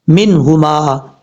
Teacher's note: یعنی نون کو ہم ظاہر کر کے پڑھیں گے. اظہار کا مطلب ظاہر کر کے. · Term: اظہار حلقی